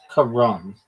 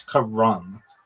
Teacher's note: Emphasis on the first syllable.